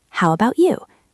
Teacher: It sounds like one long word. The T at the end of about often disappears or turns into a very light sound.